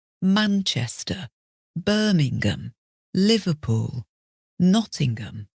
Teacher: on the words where there are a number of syllables the emphasis is on the first syllable